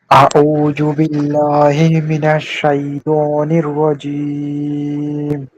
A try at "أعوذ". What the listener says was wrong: এই যে জু বলা যাবে না, জাল পড়ছিলাম না আমরা, জাল, জু, জু মানে জিহ্বাটা বের হবে কিন্তু, জু নরম করে, নরম, একদম নরম, জু, আউযু, আউযু, আউযু, রজিম, এই যে জিম হরফটা শক্ত, হ্যাঁ, আমরা কি বলছি? জিম, রজিম, রজিম